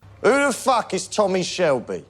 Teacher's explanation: Flat, falling intonation. Unlike some British accents that rise at the end of sentences, Brummie tends to stay level or deep slightly, giving it that cool, heavy quality you hear from Tommy.